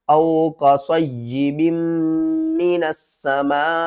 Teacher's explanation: بڑی مد ہے، اس کو ہم نے 5 الف کے برابر کھینچ کر پڑھنا ہے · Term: مد متصل